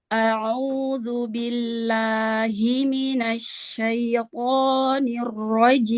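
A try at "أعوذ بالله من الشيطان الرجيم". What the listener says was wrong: Ya, huruf to-nya jangan dicicil. Asyaito. Ya, asyaito. Iya, jangan dicicil.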